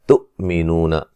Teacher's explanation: یہاں حمزہ کو جھٹکے سے ادا کریں گے